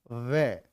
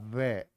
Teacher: दांत और होठ का मिलन हो रहा है